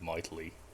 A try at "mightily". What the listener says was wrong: I think there's another syllable you missed there. You said mightly.